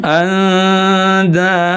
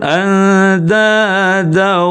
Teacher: Kalau lewat hidung anada ya kalau lewat mulut andada. · Nah, itu yang lewat mulut ya. Yang benar itu mesti lewat rongga hidung. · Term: dengung